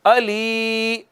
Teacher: یا مدہ ہے، اس کو ایک الف جتنا کھینچیں گے